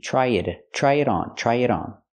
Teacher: we hear the pronunciation of T and it sound like a fast D